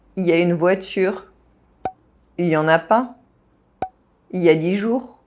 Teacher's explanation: When il is used in il y a, il is very often completely dropped.